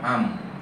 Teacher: Kemudian mim pun dapat am, yang melibatkan dua bibir yang bertemu